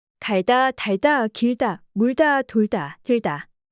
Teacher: 받침 리을 뒤에서는 된소리가 나지 않습니다.